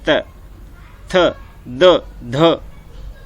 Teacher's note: दांतों से। ठीक है, जब भी आप तय बोलोगे तो आपकी जीभ दांतों से अड़ती है